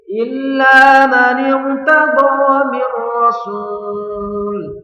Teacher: Mir rasul, enggak boleh. Harus jelas. Mir rasul tanpa mendengung ya.